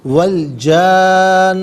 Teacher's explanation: اور ناظرین یہاں پر اسے نون مشدد ہے تو نون کو جماؤں کے ساتھ ادا کریں گے، مد کو نون کے ساتھ ملا کر نون کی آواز کو غننے کے ساتھ ادا کریں گے